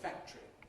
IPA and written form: ˈfæktri (factory)